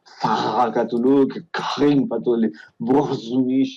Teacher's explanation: como una R francesa, pero más gutural · una especie de R francesa, pero mucho más atrás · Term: la R uvular